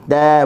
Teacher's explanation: Dan huruf yang nipis kita lebarkan sedikit. Mata, huruf ta pula hujung lidah digusi. Ta, buka mulut sambil nak senyum.